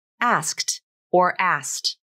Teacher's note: You can drop the K in asked. The rule of three simplifies the pronunciation of complex consonant combinations. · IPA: /æst/ /æskt/